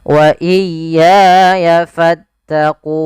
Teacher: Pada lafal wa iyaya ini juga harus ditekan huruf ya-nya.